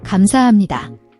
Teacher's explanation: It's a soft, unreleased P sound, where your lips close but no air is pushed out, before moving to the M of Emanida.